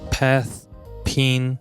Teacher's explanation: For example, aspirated P and unreleased P are complementary allophones of the same phoneme P. The phoneme P is realized as an aspirated sound when it occurs in the onset followed by a stressed vowel